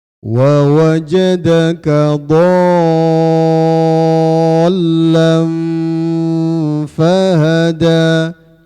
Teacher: terus tanwinnya lam ada ketemu huruf fa, di situ diikhfakan, disamarkan